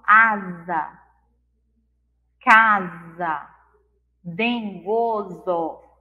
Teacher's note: O S, quando está no meio da palavra, entre vogais, somente entre as vogais, tem o som de Z.